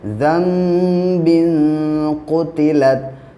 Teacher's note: नून साकिन के बाद जब बा आता है तो नून को मीम से बदल कर पढ़ते हैं, इसको इक़लाब कहते हैं।